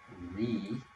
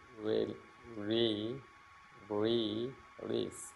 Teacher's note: It's almost the same, but the difference is chi, your tongue is way up in the front, but with the re, re, the tongue is in the back, but your mouth should be like kind of like smiling